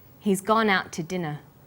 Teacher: We stress he's, gone, out, and dinner. The to is unstressed. When we link out, which is stressed, and to, which is unstressed, the final t sound in out is held slightly longer.